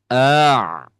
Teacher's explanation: Ainnya rasakan dari tengah tenggorokan dekat dengan jakun, Pak. Jangan sampai keluar dari rongga hidung. Maka kita coba ikhtiarnya tutup hidungnya.